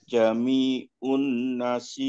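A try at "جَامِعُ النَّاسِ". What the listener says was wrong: Ja-nya panjang. Jami'un.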